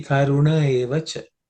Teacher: the visarga, actually, whatever you're leaving is merging into the A without any effort, without any transformation. So how should we say that karuna evacha?